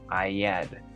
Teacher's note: I had se está pronunciando como I had. El sonido de la H se está omitiendo por completo.